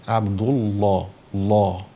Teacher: مفخم اللام وفخمه الالف تبعا لتفخيم اللام